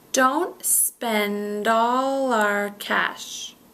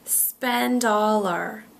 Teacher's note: So spend all our is becoming one word.